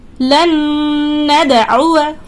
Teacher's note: دال ساکن ہے یہاں پر، یعنی قلقلہ ہو رہا ہے. یہاں پر قلقلہ کو بھی آپ کو ظاہر کرنا ہے.